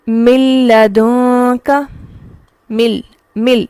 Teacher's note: ادغام بلا غنہ میں ادغام اس طرح سے ہوتا ہے کہ یہاں نون کی آواز بالکل ختم ہو جاتی ہے. ٹھیک ہے، یہاں لکھنے میں تو نون ہے لیکن جب ہم پڑھتے ہیں تو یوں پڑھ رہے ہوتے ہیں گویا نون تو موجود ہی نہیں ہے، میم ڈائریکٹ لام سے جا کر ملتا ہے.